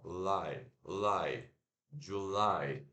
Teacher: Em inglês é o contrário. Em inglês é a segunda sílaba que é a forte. Então, é July, julho, July.